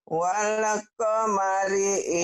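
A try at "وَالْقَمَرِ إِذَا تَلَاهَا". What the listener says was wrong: Walnya jangan ada sisanya ya. Wal. Wal. Jangan wale. Wal.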